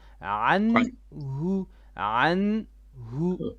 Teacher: Not anhu, ain, middle throat. Anhu, anhu.